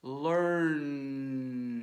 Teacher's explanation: the end sound at the end of learn makes your vocal cords vibrate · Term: voiced sound